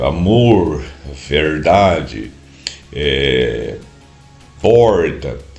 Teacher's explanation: R puxado do centro do Brasil aqui, Goiás e eh Triângulo Mineiro e uma parte da do do uma pequena parte de a mais da de Minas e São Paulo, esse esse eh amor, verdade, eh porta, esse esse R eh eh ele chama de retroflexo, eu acho que de retroflex.